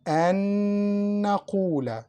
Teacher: This means, and this is general rule in Quran, don't to pronounce the first letter because it's mixed in the next letter. An Naqula, first Noon is mixed in the second Noon.